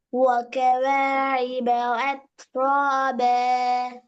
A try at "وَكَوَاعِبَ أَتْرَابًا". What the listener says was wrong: ஏட சவுண்டும் ஐண்ட சவுண்டும் வித்தியாசம் வரணும். وكواعب أترابا. ب ب நல்லா பண்ணிக்கோ. ب ب أترابا.